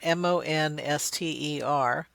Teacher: The voicing of the N is on the O, and so they perceive that not only the voicing, but also that glide up to that S position is carried by the vowel.